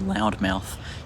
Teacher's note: listen to people saying the word loud mouth you'll notice that the word loud or the component I guess loud is ever so slightly longer than the component mouth um it's not really by much and it's not too significant